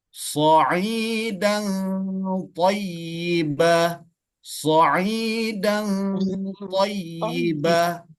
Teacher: Maka ikhfa itu disebut dengan ikhfa aqrab. Maka ikhfa aqrab ini sangat-sangat tipis samar-samarnya karena sangat-sangat berdekatan